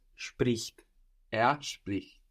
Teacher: we have our E becoming an I there